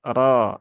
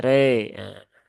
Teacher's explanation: rnya hanya dibaca Dua harakat saja dan dibaca dengan tebal